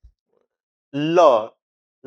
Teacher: ল বললে তালুতে একটা জায়গায় লেগে যাচ্ছে এবং তার জিহ্বার দুদিক দিয়ে এইভাবে লেগে গিয়ে এবং দুদিক দিয়ে বাতাস নির্গত হচ্ছে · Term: পার্শ্বিক ধ্বনি